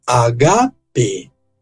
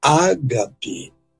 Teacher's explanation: o acento tônico dessa palavra recai na penúltima, não na antepenúltima sílaba, porque a palavra termina com uma vogal longa, que é a vogal eita.